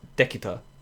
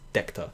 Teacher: the e sound between the second and last syllables it's being shortened based on a habit of Japanese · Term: devoicing